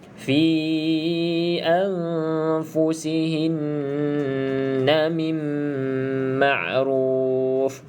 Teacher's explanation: Pastikan mim bersabdu, tutup mulut rapat-rapat, kemas-kemas, bibir atas bibir bawah dan juga dengung 2 harakat.